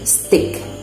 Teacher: The unaspirated t occurs directly before or after s, like in the word stick.